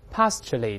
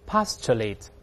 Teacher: 中间这个字母▁T▁发▁ch▁这个声音